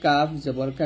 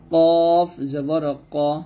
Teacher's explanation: কাফ পাতলা হয়, কাফ জবর কা, কিন্তু কফটা মোটা করতে হবে, কফ জবর ক, এরকম ভাবে, কা বলা যাবে না, কফ জবর ক।